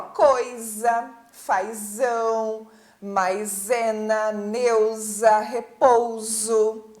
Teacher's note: certeza que a letra s s com som de z tá então depois do ditongo tem som de z